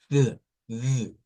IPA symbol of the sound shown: θ